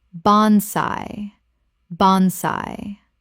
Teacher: Two syllables with the AI making an AY sound.